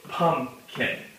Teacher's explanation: when we say the word pumpkin, a lot of our emphasis goes on the first part. So pumpkin So we can kind of show that the first syllable gets the emphasis. · One of them is going to get stressed and one of them won't be. So when we see the word pumpkin, a lot of our emphasis goes on the first part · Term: stress syllables, stressed syllables